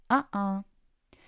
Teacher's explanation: el aire se detiene cuando la gloti se cierra en la parte posterior de la garganta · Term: oclusión glotal